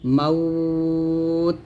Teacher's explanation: এখানে এক আলিফ কিংবা দুই আলিফ টান দিতে পারেন সমস্যা নাই